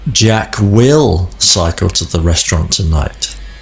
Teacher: I have shifted or moved the emphasis onto will